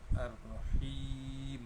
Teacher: kena panjangkan sebutan ha, kerana selepas ha itu ada ya mati.